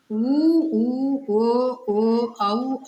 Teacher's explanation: வாய் திறக்கும் முயற்சியுடன் உதடுகளை குவிப்பதால் பிறக்கின்றன